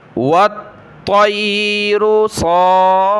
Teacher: فا کو ایک الف کی مقدار کھینچیں گے کھڑا زبر کی وجہ سے اور تشدید کی وجہ سے سخت کریں گے